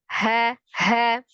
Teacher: Adapun sifatnya untuk di ha-nya ada al-hams itu nafasnya mengalir. Ha. Nah, kalaupun rawahnya suaranya mengalirkan itu memang ada awalan seperti seolah-olah ada awalan itu di huruf ha itu ada alirannya dulu.